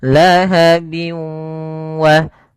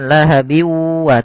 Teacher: cara membacanya yaitu masukkan suara tanwinnya bin ketemu wa dimasukkan ke huruf wau dan ditahan karena disertai dengan gunah lahabi wa bukan lahabiwa tapi lahabi wa karena dia masuk gunah masuk ke ke rongga hidung kemudian di sini Ini ini idghamnya juga kita namakan dengan idgham naqis. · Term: idgham bighunah